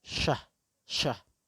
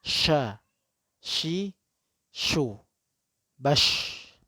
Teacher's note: huruf shin memiliki sifat tafasyi yang artinya udara mengalir deras di mulut. Seperti orang mengusir ayam.